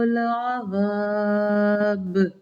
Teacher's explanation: یہاں پہ بھی وقف کی صورت میں نے ب کیا، یعنی کہ با کے اوپر جزم آ گئی، وقفاً قلقلہ کیا جائے گا